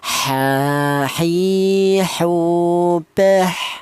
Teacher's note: Huruf ha ini berasal dari tengah tenggorokan ya.